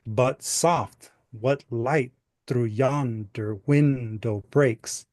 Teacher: if you kind of exaggerate those syllables every other syllable you'll hear the pattern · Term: unstressed stress